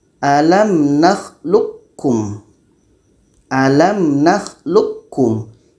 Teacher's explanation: Q ini masuk secara sempurna jadi bunyi Q ini memang tidak terdengar lagi kalau kita baca alam naklum alam naklukum yang terdengar bunyi ka · memang tidak terdengar lagi kalau kita baca alam naklum alam naklukum yang terdengar bunyi ka bunyi ko sudah tidak ada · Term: Idam Kamil